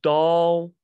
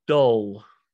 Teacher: two stones don't worry about that but the biggest thing is your jaw is further down for ah further down further back more in the middle